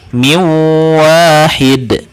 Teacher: Kemudian untuk bacanya nanti dileburkan ya suara nun sukun atau tanwinnya. Suara nun sukun atau tanwinnya itu dileburkan ketika bertemu dengan wawu, mim, nun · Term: idgham bigunah